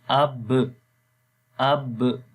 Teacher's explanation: قلقلہ کا مطلب کہ آواز کے اندر جنبش پیدا ہوگی، آواز ایک قسم کی باؤنسنگ ساؤنڈ ہو جائے گی، ڈبل آواز آئے گی